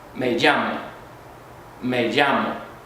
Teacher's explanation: We say a double L, almost like a Y, or sometimes with a little J or SH sound in there.